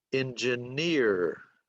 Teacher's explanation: Now a 3-3 word, the stress is on the last syllable.